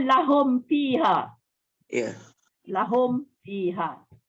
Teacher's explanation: nak sebut lahum fi tu kena tutup juga mulut mim tu sebab dia tidak membunyikan dengung bertemu dengan fa. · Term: izhar syafawi